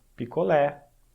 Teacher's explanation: Percebe que o E ele é mais longo, picolé. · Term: E necessariamente longo